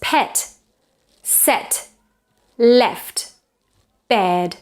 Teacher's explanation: it's more open than Spanish e